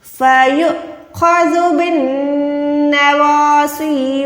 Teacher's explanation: واو کو ادا نہیں کریں گے، اس چھوٹے سے حمزہ کو ادا کریں گے جھٹکے اس کے ساتھ. فیؤخذ، خو کو موٹا کریں، زال کو نرم رکھیں